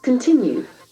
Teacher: There are three syllables. Continue. The accent falls on the second syllable.